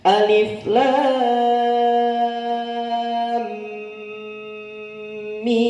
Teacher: Kalau terakhir mim nggak pakai dengung